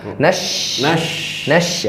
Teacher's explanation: dari bagian tengah lidah saat menyentuh langit-langit mulut, udara menyebar.